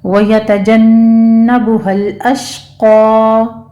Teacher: अल अश्क़ा में लाम को भी स्टॉप करना है, शीन को भी, शीन के ऊपर तफशी होगी और क़ाफ को आपने 2 काउंट कर लेना है।